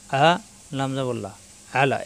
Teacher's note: হাইয়া আলাস সালাহ, হাইয়া আলাস সালাহ, হা কণ্ঠনালীতে চাপ দিয়ে হামেল বিয়ের সাথে হাই, ইয়া তাজদিদ দুইবার, জিহ্বার মাঝখানে উপরে তালুতে লাগবে, হা চাপ দিয়ে হাই, পরে ইয়া জবর ইয়া, হাইয়া, আইন জবর আ, কণ্ঠনালীর মাঝখানে চাপ দিয়ে আ